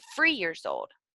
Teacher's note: Most commonly, children substitute the TH sound with the F sound. So you might hear children say, instead of 3 years old, they might be free years old.